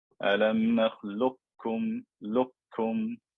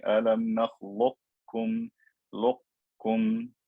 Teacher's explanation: But if I kept the sifa of isti'la of the qaf, I would say alam nakhluqkum, luqkum. I would keep that roundness of the qaf, and this is a second permissible opinion which some reciters also recite with.